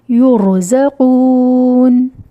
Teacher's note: اگر اس ایگزامپل کی بات کریں تو وقفاً یہ ہوگا شر، وصلاً شر لہم، را تفخیم، ٹھیک ہے۔ کیس 5، را ساکن سے پہلے ضمہ ہو تو ضمہ کی وجہ سے را کو موٹا پڑھیں گے